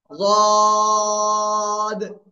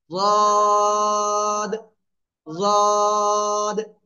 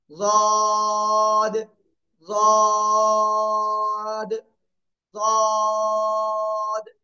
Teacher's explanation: জিহ্বার গোড়ার কিনারা উপরে মাড়ির দাঁতের গোড়ার সাথে লাগাবো, লাগিয়ে আমরা মোটা আওয়াজে 3 আলিফ টেনে উচ্চারণ করব।